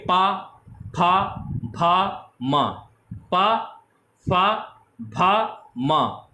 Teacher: ये ओष्ठ से बोले जाते हैं। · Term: पा वर्ग